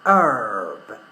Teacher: one of the things I've done is pronounce the letter R, something that I wouldn't have done in British English. Herb is American English.